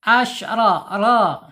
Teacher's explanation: Kemudian ro secara ee makhraj ada di alisan ya. Alisan yaitu ujung tepi lidahnya ee menyentuh langit-langit ya. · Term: tafhim tebal